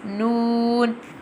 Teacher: Noon pronounced from the tip of the tongue touching the gums of the top four front teeth, like this. Noon.